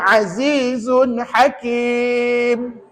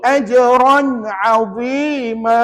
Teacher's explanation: Cara bacaannya nyata, terang, jelas, tanpa dengung. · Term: izhar halqi